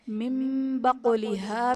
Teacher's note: نون ساکن کو میم سے بدل کر اخفا کریں گے، یعنی غنہ کر کے پڑھیں گے، یہاں بھی اقلاب کا قاعدہ ہوگا.